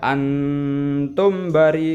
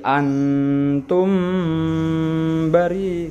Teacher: maka mim sukunnya dibaca dengung ya, karena bertemu dengan huruf ba. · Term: ikhfa syafawi